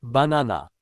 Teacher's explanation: Banana first and last are unstressed, both sound like a.